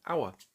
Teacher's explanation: It starts with H, but is a consonant, but we don't pronounce the H. We say hour.